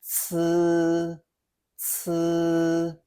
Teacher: it's unvoiced, so there's no throat buzz, but it is heavily aspirated compared to z with a strong burst of air. Hold your hand near your mouth to feel it.